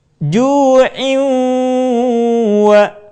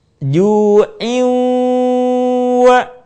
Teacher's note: Suara kita sebagiannya masuk ke rongga hidung.